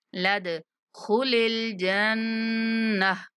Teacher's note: لام کو دال کے ساتھ ملاتے ہوئے دال پر کلکلا کریں گے، مطلب دال کو تھوڑا سا ہلا کر پڑھیں گے